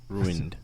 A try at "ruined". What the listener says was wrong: Why do you make so much emphasis on the R?